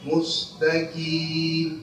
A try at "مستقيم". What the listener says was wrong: Masih kaf. Qaf dan kaf makhrajnya satu tempat, di pangkal lidah.